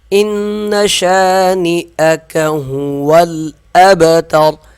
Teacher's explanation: ان شانئک هو، ہا کو صاف پڑھیں گے، واو کو لام سے ملا دیں گے، یہ الف نہیں پڑھا جائے گا۔